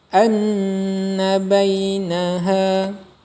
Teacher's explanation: huruf mint atau Nun bertasydid Hai maka hukum bacaannya disebut gunnah cara membacanya dibaca dengung dua harokat